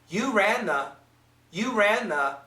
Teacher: we don't hear a clear th · if we say this really quickly the N can cancel the th